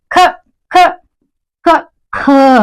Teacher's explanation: ನಾವು ಹೌದಾ ಖ ಖ ಖ ಖ ಇಲ್ಲಿ ಉಸರು ಏನೈತೆ ಕಡಿಮೆ ತಗೋತೀವಿ ಖ ಅಂದಾಗ ಇಲ್ಲಿ ಏನಾಗ್ತದೆ ಉಸರು ಜಾಸ್ತಿ ಬರ್ತದೆ